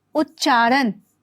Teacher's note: त के बाद अगर च या छ हो तो त का परिवर्तन च में हो जाता है